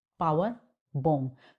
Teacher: तो हमारी दोनों बाइलेबियल है, मतलब लिप का यूज करके दोनों साउंड को हम बोल रहे हैं. मैनर दोनों का सेम है, both are plosive one, पावर, form.